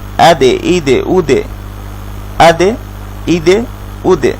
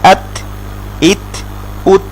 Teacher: দালে আমরা কলকলা করছি, কিন্তু তাতে আমরা কলকলা করছি না